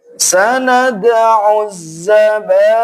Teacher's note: Selanjutnya sama falyad'u nadiyah ini sama dengan ayat yang ke-18 tekniknya. Hanya saja setelah ain langsung menekan zai karena zainya ditasydid.